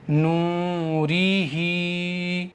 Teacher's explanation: रा को नहीं खींचना है। हा को एक अलिफ के बराबर खींचना है। · را کو نہیں کھینچنا ہے، ہا کو ایک الف کے برابر کھینچنا ہے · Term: کھڑی زیر